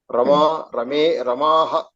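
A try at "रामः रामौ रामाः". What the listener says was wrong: Samyak. Very good.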